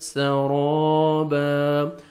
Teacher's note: را کو زبر ہے، را کو موٹا کرنا ہے اور الف مدہ 1 سیکنڈ آپ نے را کو کھینچنا بھی ہے